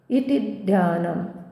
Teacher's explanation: ती रस्व आहे आणि ती वर आघात येईल कारण पुढे जोडाक्षर आहे